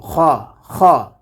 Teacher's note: খ হরফটিকে আমরা কণ্ঠনালীর শেষ ভাগ হতে উচ্চারণ করব